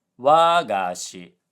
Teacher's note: So, this word is supposed to be wagashi, low high low, which is a traditional Japanese sweet. But Duolingo said wagashi, high low low, which sounds like an archaic way of saying my teacher